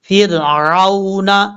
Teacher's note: فا کو را سے ملائیں گے اور را کو بریک پڑھیں گے، کیونکہ جب را ساکن سے پہلے زیر ہو تو را بریک پڑھا جاتا ہے ۔ پھر اب عین کو واو سے ملائیں گے، عین واو